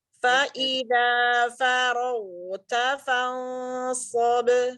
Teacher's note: Kemudian ghainnya dirofahkan, dibuka rahangnya.